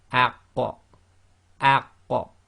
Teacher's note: Now when you do it with the sakin, it's the opposite. You effectively join the sound to it and then block. And when you go to do the block, you have to do the separation to give the final sound, which gives you the qalqala.